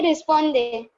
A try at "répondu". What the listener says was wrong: S नहीं है उधर, देखो अच्छे से. Je répond. Yeah, j'ai répondu.